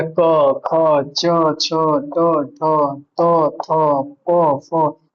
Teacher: इन सभी का उच्चारण करते समय हमारा क्या होता है, स्वर तंत्रिका में कंपन नहीं होता है, इसलिए अघोष हो जाएगा।